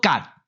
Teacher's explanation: 第一种的读法就要读作入声，读作甲